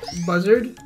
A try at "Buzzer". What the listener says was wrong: Buzzer. No, about the D.